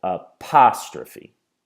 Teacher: We can hear that the stress is on the second syllable